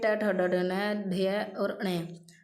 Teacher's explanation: मूर्धा में आ गया ट ठ ड ढ न ढ और ण